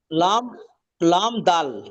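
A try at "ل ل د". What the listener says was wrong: মাশাআল্লাহ মাশাআল্লাহ, সুন্দর পড়েছেন।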